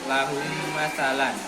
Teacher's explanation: Dan bacanya juga standar bacaan idgham, yaitu mendengung sedikit, mendengung, menyambungkan. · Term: idgham syafawi